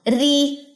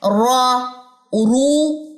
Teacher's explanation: री तो ये अक्सा लिसान पीछे से नहीं उठती। अगर मोटा रॉ होगा, जबर या पेश के साथ मोटा होता है तो फिर जो है अक्सा लिसान उठती है।